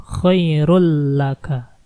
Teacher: sebuah tanwin bertemu dengan lam. Kita langsung masuk ke dalamnya · tanwin ketemu la, kita masukin langsung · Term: idgham bila ghunnah, idgham bila gunnahnya